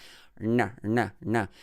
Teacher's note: And then on that ranya, you need to hang on that rna. It's a cerebral na or retroflex sound where you lift your tongue and touch the hard palate above your upper teeth.